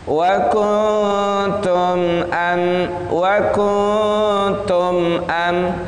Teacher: nun mati bertemu dengan ta, dia ikhfa, samar-samar. Maka suaranya di antara hidung dan mulut, di antara gunnah dan izhar.